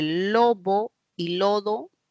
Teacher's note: entre lobo y lodo, B y D son oclusivos.